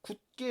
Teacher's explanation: 자, 다른 예를 들어볼까요? 굳게 같은 경우에는 받침이 디귿이고 뒤에 예사소리 기역이 오면 이 예사소리 기역이 된소리인 쌍기역으로 바뀌는 것이죠. 이것도 역시 우리가 경음화라고 말할 수 있습니다.